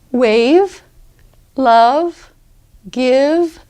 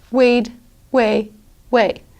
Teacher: you need to pronounce that V, and really hold on to it for a little bit, before you actually leave the word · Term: final V's